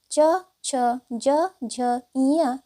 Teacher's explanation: च, छ, ज, झ, ञ ये सभी तालव्य व्यंजन हैं, यानी कि च वर्ग के सभी व्यंजन तालव्य व्यंजन कहलाते हैं और इसे तालु के माध्यम से बोला जाता है